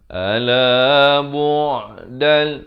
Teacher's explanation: bu' di pertengahan kerongkong. Dal di sini idgham bila gunnah.